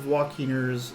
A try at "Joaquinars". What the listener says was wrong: Joaquinars. It's an A, not an E.